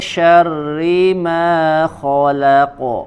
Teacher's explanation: pada saat membaca huruf qof dinaikkan lagi pangkal lidahnya untuk menebalkan suara dan menyempurnakan huruf qof-nya